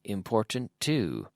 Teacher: Almost as if there were one T.